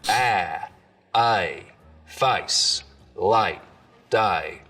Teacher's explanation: here you get some really dramatic face lowering for example so the diphthong in face starts real low down around ah